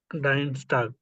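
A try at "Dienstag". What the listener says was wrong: ডিনস্টাগ, নট ডাইনস্টাগ, ডিনস্টাগ। আয়ের উচ্চারণ ই।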